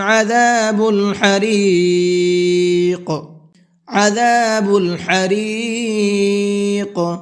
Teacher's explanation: عذاب کے عین کو حلق سے نکال کر کے پڑھیں گے اور حریق کے حا کو بھی حلق سے نکال کر کے پڑھیں گے